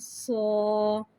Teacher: صاد کو ایک الف یعنی 3 حرکات کے برابر کھینچ کے پڑھیں گے. صاد حرف مستعلیہ ہے لہٰذا اس کی آواز حلق سے موٹی ادا ہوئے گی